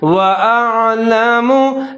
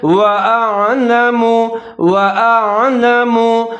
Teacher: जैसे वल अर्ज़ि व अअलमु, यहाँ पर लफ्ज़ है व अअलमु, वाव के ऊपर ज़बर है, होंठ गोल करेंगे, हमजा के ऊपर ज़बर है, आइन साकिन है, पहला जो हमजा है इसको बारीक पढ़ेंगे और जो दूसरा आइन है उसको मोटा करके पढ़ेंगे, वाज़े करके पढ़ेंगे।